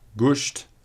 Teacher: Latin s changed to sh in all early loanwords